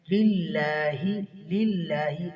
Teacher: لفظ اللہ باریک پڑا جائے گا یہاں پر، کیونکہ پیچھے ما قبل زیر ہے